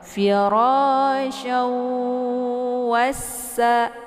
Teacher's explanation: Jadi cara bacanya itu dimasukkan sambil didengungkan suaranya. Syawwa ya, ditekan dulu sya-nya, kemudian ditahan sehingga 2 harakat, dileburkan suaranya ke dalam wa ya. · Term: idgham bi gunnah